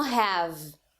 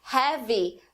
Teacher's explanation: Mas como a gente não tem palavras em português que terminem com som de v, não tem nenhuma palavra, a gente insere um i para que essa sílaba fique parecida com a sílaba que a gente tem no português. Então, uma palavra como have acaba se tornando heavy no falar brasileiro.